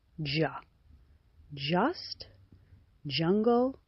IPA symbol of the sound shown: ʌ